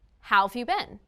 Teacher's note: In spoken English, have and has are often reduced after question words. Have can sound like v or of.